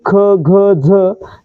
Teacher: जे इतर व्यंजन आहेत जसं की ख घ झ ज्यांचा उच्चार करताना ह चा उच्चार होतोय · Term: महाप्राण व्यंजन